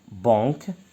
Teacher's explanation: بالنسبة banque, on dit banque, le B, le A nasal et le K. On ne dit pas banque, c'est banque.